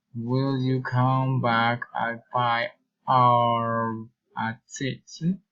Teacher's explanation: Alternative question, raising and falling intonation.